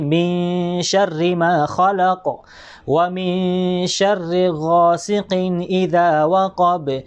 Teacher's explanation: yung patay na nun ay hindi po malinaw ang pagbasa natin ng nun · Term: ikhfa